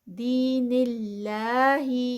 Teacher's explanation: اللہ کا جو نام ہے وہ لائٹ ہوگا کیونکہ اس سے پہلے زیر آ گئی ہے تو اس کو لائٹ پڑھیں گے، ہیوی نہیں کریں گے.